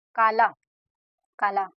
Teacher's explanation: ला ला को ज्यादा खींच रहे हैं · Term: स्वराघात